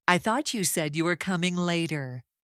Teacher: Stress falls on thought, said, coming, and later. The pitch rises in the middle and falls at the end.